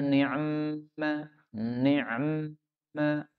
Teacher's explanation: Nunnya di fathah. Boleh juga nunnya di kasrah, kemudian ainnya disukun.